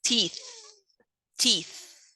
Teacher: the phoneme th, which is voiceless, interdental, and it is a fricative.